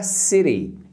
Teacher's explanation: o T aí tem um som de R como o de Maria em português, urareriroru.